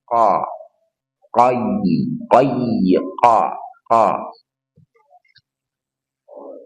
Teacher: Qof dari pangkal lidah qo arahkan dia punya surat istilah arahkan dorongan suara ke langit-langit mulut